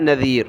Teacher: ذال پر زبان نکالیں